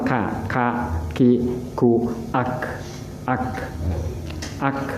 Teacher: Kaf itu dipermulakan di langit-langit ya.